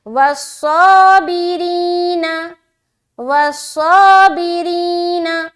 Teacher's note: والموفون بعہدہم اذا عاہدوا، آگے والصابرین، واو صاد زبر وس، صاد کو موٹا رکھیں گے، سیٹی کی آواز ہلکی ظاہر ہوگی لیکن سواد موٹا پڑھا جائے گا. والصابرین با زیر بی، را یا زیر ری، نون زبرنا، ری کرتے ہوئے را باریک رہے گی، کھینچیں گے یا مدہ ہو رہا ہے ایک الف کے برابر.